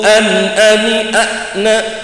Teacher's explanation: pas disukun hamzah ini punya sifat syiddah. Syiddah itu suaranya tertahan. Beda lek sifat rikhwah bis ngelos.